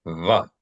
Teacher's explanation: A V pronounced using only one's lips, no teeth. Sounds similar to the English V. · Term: Veth